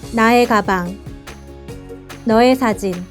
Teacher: In spoken Korean, we often pronounce it as 에, to make it easier to pronounce when used for the meaning of possession.